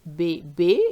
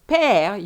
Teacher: Then you have the accent on the other side, which is called accent grave, and that think of the word father, père, where you really open your mouth. So the first one is bébé, your mouth is almost closed, whilst père, you have to open it